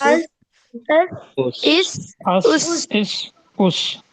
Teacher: देखिए सीटी की आवाज पैदा हो रही है